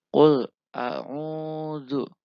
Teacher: waw mati sebelumnya terdapat huruf berharokat doma. Cara membacanya dipanjangkan 2 harokat atau 1 alif. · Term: mat asli